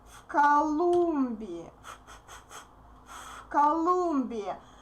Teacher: Voiced V becomes voiceless since K is voiceless.